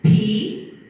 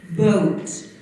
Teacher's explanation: But the P is unvoiced, which means your vocal cords do not vibrate. The B is voiced, which means you can actually touch your throat and you can feel the vocal cords vibrating.